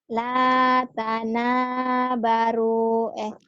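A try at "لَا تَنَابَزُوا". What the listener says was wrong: Tanah baru. La tanah bazu salah titik beda ya bunyinya. La tanah baru kalau nggak ada titik bener. La tanah bazu zai ya.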